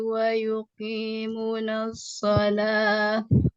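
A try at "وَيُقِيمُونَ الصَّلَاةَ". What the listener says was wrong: Wa yuqimuna itu ada panjang semuanya Bu. Diulang Bu.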